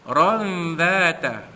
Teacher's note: ra itu pertamanya dibaca tebal kerana bagi atas tafkhim. Ra alif dua di atas ron bertemu dengan huruf zal pada dhata, maka hukumnya ikhfa haqiqi, menyembunyikan bunyi tanwin yang bertemu dengan huruf zal.